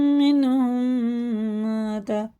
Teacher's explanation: میم ساکن کے بعد میم جب آتا ہے نا تو یہ ادغام شفی ہوتا ہے، اس کو غنہ کر کے پڑھنا ہوتا ہے